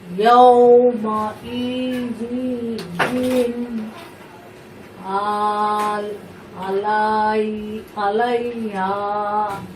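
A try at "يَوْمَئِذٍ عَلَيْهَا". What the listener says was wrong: মাশাআল্লাহ, সঠিক আছে।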